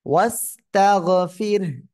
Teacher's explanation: রা সাকিন তার ডাইনে জের চিকুন করে পড়তে হবে